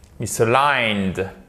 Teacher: Décalé, ou to be misaligned, être décalé, misaligned, et vous faites très attention, misaligned, c'est l'accent tonique qui est sur la deuxième, l'accent tonique est sur la dernière syllabe